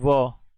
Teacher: दंतोष्ठ्य, दांत, ऊपर के दांत प्लस निचला ओठ